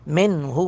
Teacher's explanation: کے بعد ہا ہے، یہاں پہ اظہار کریں گے من ہو، نون کی آواز ناک میں نہیں جائے گی، ظاہر کر کے پڑھیں گے